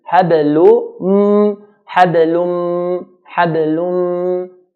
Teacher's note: the lam will skip the hidden noon and go straight to the mim, and hold the mim. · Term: idgham with ghunna